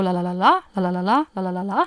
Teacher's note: Wenn wir jetzt das Französische zum Beispiel anschauen, dann spricht man da von sogenannten Akzentphrasen. Da geht man am Ende mit der Stimme hoch.